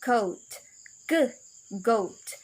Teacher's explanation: finally we'll use the back of her tongue and the soft palate that's the soft place a far back of the roof of